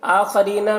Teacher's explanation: آخرینہ میں کھڑا زبر ہے جو الف مدہ کی طرح ہے، تو اسے بھی ایک الف کے برابر کھینچ کر پڑھیں گے